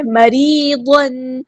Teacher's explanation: ضاد ہمارا heavy letter پورا ادا کریں گے، تنوین کی آواز کو ہم یہاں پہ ظاہر کریں گے، اظہار ہو رہا ہے · را ہمارا باریک لائٹ لیٹر ہے یہاں پر، اور یا مد آئی ہے، 2 کاؤنٹس لمبا کریں گے، 2 حرکات لمبا کریں گے۔